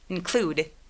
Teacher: 동사 있는 힘 빼고 include, include. 그래서 N 소리만 정말 살짝 내준다고 생각해주세요. 대신에 소리가 없어지면 안 돼요.